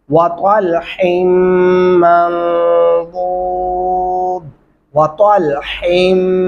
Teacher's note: वतल तो आप पढ़ेंगे, हा बारीक आवाज में पढ़ते हुए हमने गुन्ना भी करना है, और मीम को नून के साथ भी मिलाते हुए आगे ध्यान रखना है वक़फ़ कैसे करना है।